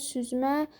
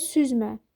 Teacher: Süzmə deyirsən nənəm süzmə aldı. Vurğu axıra düşür.